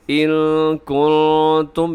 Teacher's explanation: یہاں دونوں میں اخفا ہے کیونکہ نون ساکن کے بعد کاف اور نون ساکن کے بعد تا